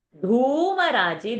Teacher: that Dhu is a Mahaprana and also a Dirgha sound. Raji, that G is a Dirgha, long sound.